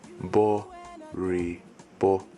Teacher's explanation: you start low, then you go high, bo. You go low again, re, and then you go high again, bo.